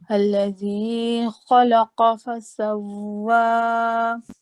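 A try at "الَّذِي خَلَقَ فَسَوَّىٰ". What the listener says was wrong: یہاں پر جو آپ نے اللہ دی پڑھا اس کو جلدی کر لیا.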